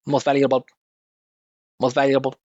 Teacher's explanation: this is all equal characteristics of volume, length, pitch, and space for every syllable in that word.